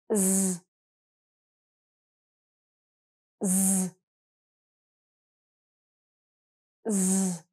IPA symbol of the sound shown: z